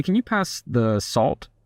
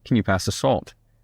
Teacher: So when you end on a lower note, it sounds more serious.